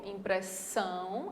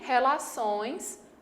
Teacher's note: De fato, a sílaba mais forte é essa daqui, ó, impressão, a última, e relações, a última também.